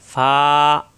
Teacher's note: উপরে 2 দাঁতের আগা, নিচের ঠোঁটের পেটে লাগবে, 1 আলিফ পরিমাণ টান হবে, ফা।